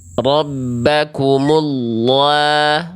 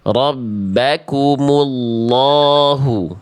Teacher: Jangan ke vokal A karena dia tebal. Jadi vokal A-nya gemuk. Jangan ke vokal A yang tipis ya.